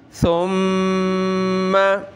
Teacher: मीम के ऊपर तशदीद आ जाए, नाक में आवाज़ पैदा करेंगे।